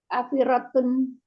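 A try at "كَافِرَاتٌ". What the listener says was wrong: kafiratun. Panjang ya ada matnya karena rumusnya jamak muannas salim tadi mufrad ditambah dengan alif dan ta. Kafiratun.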